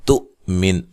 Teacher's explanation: کریں گے، تؤمن یہ حمزہ کو جھٹکے سے ادا کریں گے، حمزہ ساکنہ کو جھٹکے سے ادا کیا جاتا ہے